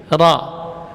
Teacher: Ujung lidah di gusi atas, ya. Ra huruf yang memiliki getaran, makna takrir irti'ad ra'sul lisan, yang bergetar itu adalah bagian atasnya lidah. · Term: huruf takrir